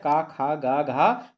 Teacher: तो घ का उच्चारण स्थान होता है कंठ।